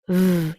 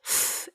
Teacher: V is the same mouth shape as an F, but F is voiceless, F, and V is voiced. V, you can hear your vocal cords are used.